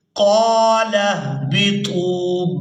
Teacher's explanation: طا کو واو مدہ کے ساتھ ملاتے ہوئے کھینچ کر ادا کریں گے